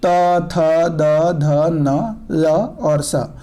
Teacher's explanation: ये दंत्य वर्ण हैं, इसलिए ये दंत से बोले जाते हैं।